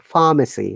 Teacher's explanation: We pronounce in British IPA pharmacy, no R.